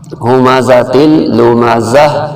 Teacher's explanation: وقت کی وجہ سے گول تا ہمیشہ ہا بن جاتا ہے، تو اس کو زا زبر ہا زہ پڑھا جائے گا، ہمزۃ لمزہ۔